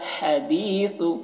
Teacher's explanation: یہ ہا ہے ہوا کے ساتھ میں نکلتی ہے